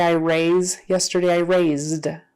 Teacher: that voiced Z becomes a voiced D instead of uh t for that Ed